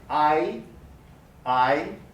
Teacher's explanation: the tongue begins in a low central position and ends in a high front position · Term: diphthong